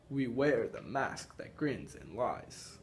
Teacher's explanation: it's unstressed stressed for each syllable so you can tell by we wear the mask that grins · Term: iambic